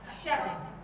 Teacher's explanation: Jangan kita memanjangkan syin tu. Kita satu harakat je.